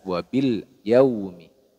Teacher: disebut dengan izhar karena lam sukun nya dibaca jelas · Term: izhar Qariah